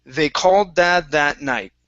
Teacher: you didn't pronounce dad separately from called and that. It was called dad that. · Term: Push it together